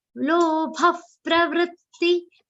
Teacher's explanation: the visarga's pronunciation will be like pha.